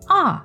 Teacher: just let your voice go all the way down like you just bumped your head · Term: fourth tone